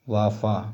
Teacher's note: दंतोष्ठ निचले ओठ व ऊपरी दांतों से